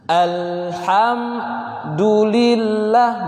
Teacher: Lamnya tidak boleh dipantulkan, ya, sehingga ketika dia lam ujung lidah bertemu dengan lithah itu adalah gusi di atas pangkal 2 gigi atas, langsung dilepas dia. Alham, jangan itu biasa begitu tuh, dialirkan lidahnya alham, ya, tapi langsung dilepas.